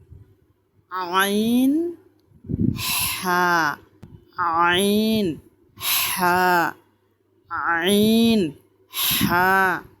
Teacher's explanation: আইন হা শক্ত এবং চাপায় বলতে হবে গলাকে চাপ দিয়ে আইন হা বলতে হবে